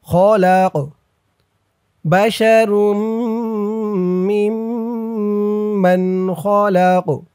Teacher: তখন সাকিনওয়ালা কফ হয়েছে, এই কফটা কলকলার হরফ হয়ে গেছে, ধাক্কা দিয়ে পড়তে হবে।